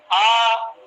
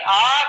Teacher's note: تو جب آدمی آ کہے گا تو اسے معلوم ہو جائے گا کہ زبان اس میں بھی کہیں لگ نہیں رہی ہے، بلکہ زبان کہیں لگے بغیر منہ کے اندر خالی جگہ سے یہ پڑھا جا رہا ہے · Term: الف